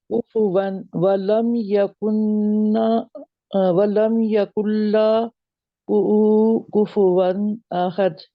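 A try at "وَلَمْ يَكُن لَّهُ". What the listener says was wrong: जहां पे अभी भी आप ऊ कह रहे हैं, ऊ नहीं है, हु है, हु। वलम यकुल्लहु कुफुवन अहद, कुल्लहु, वलम यकुल्लहु, जहां पे टाइम नहीं देना, काफ को फौरन लाम के साथ मिला देना, जहां पे एक असूल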